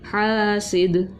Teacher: حاسی، دال دو زیر دن، حاسدن آگے وقف حاسد، ٹھیک ہے، قلقلہ کیا کیونکہ حرف قلقلہ ہے دال